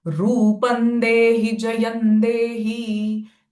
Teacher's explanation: The na sound of anuswara, not ma.